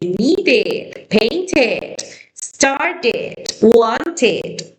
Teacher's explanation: E. Como que si fuese una mezcla entre la I y la E.